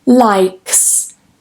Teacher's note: K, k, k, k. Like is a voiceless sound at the end, so when we add that S, it's going to be likes. Likes is going to be a S sound.